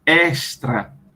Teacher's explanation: Pronunciando o S bem sibilante, ou como pronunciam no Sudeste, extra, com esse E bem aberto.